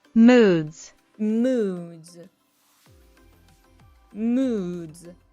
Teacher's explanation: Devoicing word endings. In American English, we often maintain the buzz in our throat for voiced consonants at the end of words.